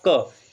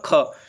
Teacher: अघोष जो महाप्राण है वो हो जाएगा ख